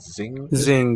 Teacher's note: just like we do in English too, English and German, N-G double letter for an eng sound, single consonant.